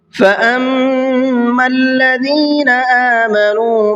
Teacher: فَأَمَّا کے میم پر چونکہ تشدید ہے، اس لیے غنہ کر کے پڑھیں گے